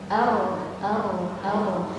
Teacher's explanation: untuk jumlah getaran sifat R tidak bisa dihitung ya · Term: sifat takrir